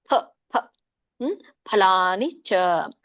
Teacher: ಫ ನೋಡಿ, ಎರಡೂ ನಮ್ಮ ತುಟಿಗಳು ಸೇರ್ಬೇಕು.